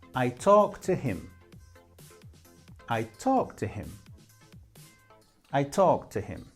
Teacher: when we speak naturally, the T of ed disappears because we have that T and also the T of to.